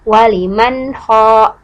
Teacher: Maka ketika mengucapkan waliman ho, dari nun sukun langsung ke ho, berpindah, tidak ditahan-tahan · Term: izhar